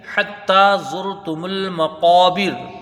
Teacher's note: دوسری آیت دیکھیں، حتی زرتم المقابر، حتی، تا کو ایک الف کی مقدار کھینچ کے پڑھیں گے۔ ہا کو جب تا سے ملائیں گے، تا کو پھر ایک الف کی مقدار کھینچ کے پڑھیں گے، کیونکہ اس میں کھڑا زبر ہے